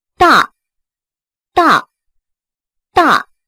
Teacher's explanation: 再看这个大大大大，一定要又高又短